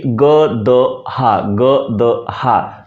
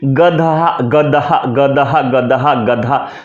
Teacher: द में जब हकार जोड़ते हैं तो ऑटोमेटिक वह महाप्राण ध्वनि ध में परिवर्तित हो जाती है